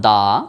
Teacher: দাটি কিন্তু মুক্তাক্ষর, কেননা দা উচ্চারণ শেষে আমরা ইচ্ছা করলে টেনে লম্বা করে পড়তে পারছি